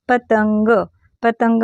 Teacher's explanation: पतंग मध्ये होतो का नाही ग ला न जोडल्यासारखा उच्चार होतो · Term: अनुस्वार